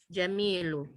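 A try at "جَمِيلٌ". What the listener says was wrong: Naam, jamilun. Baik tanwin ya. Sekali lagi coba.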